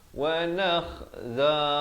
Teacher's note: kha di hujung kerongkong